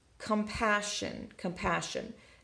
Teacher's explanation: it's not calm passion like we might think but it's flexing to the schwa